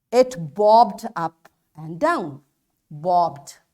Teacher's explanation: we pronounce this e d as d sound when the final sound is voiced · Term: voiced sound